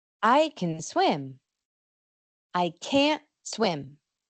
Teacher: La T no se pronuncia, pero no suena igual.